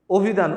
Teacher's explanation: লিখলাম স্বরে অ দিয়ে, উচ্চারণ করলাম অভিধান ও দিয়ে। এখানে দেখো স্বরে অ এর উচ্চারণ সংবৃত হয়েছে।